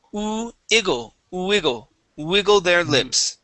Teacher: remember to start off with an oo sound with this W word.